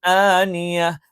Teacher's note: ഐനിൻ, ആ തൊണ്ടയുടെ മധ്യഭാഗത്തു നിന്നാണ്. ആനിയ, ആ എന്ന് പറയുമ്പോൾ തൊണ്ടയുടെ താഴ്ഭാഗത്തു നിന്നാണ്